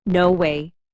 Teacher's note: Let your voice rise slightly. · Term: intonation